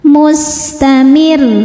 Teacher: Salah satu sifat sin yang tidak memiliki lawan adalah sifat shofir. Sofir artinya berdesis seperti suara ular.